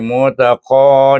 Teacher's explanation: Sururim, tanwin bertemu dengan min, baca dengan idgham al gunnah dengung dua harakat. Mutaqa dibaca dengan mad asli mutaqa dengan tebal mengangkat pangkal lidah.